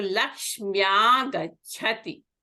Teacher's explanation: Lakshmi ends with a long E, and agachati begins with a long A. So they are dissimilar vowel. So this E will be replaced by Ya. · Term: Yana Sandhi